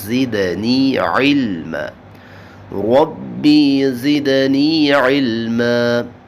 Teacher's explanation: حروف صفیریہ میں سے ہے، سیٹی کی آواز پیدا ہوگی، زدنی، زد، دال پہ قلقلہ ہے، آواز ظاہر کریں گے